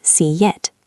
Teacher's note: To get from see to it, your tongue moves through a Y position, so we say see yit. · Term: Y sound